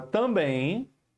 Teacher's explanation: Ou seja a sílaba forte é na última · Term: oxítona